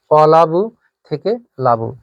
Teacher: অলাবু থেকে লাবু, শব্দের আদির এই অটা কিন্তু উঠে গেছে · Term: আদি স্বরলোপ